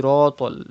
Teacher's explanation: Sad is a mustalia letter. It is always pronounced in a thick tone, so you have to say Siratal.